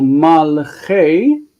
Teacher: So malche is not a consonant cluster. It doesn't close. It's a reduced vowel, which means it's medial shva.